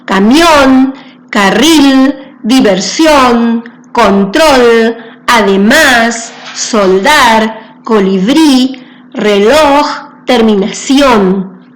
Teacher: Cuando nosotros las escuchamos nos damos cuenta que su última sílaba es la que suena con mayor énfasis. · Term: palabras agudas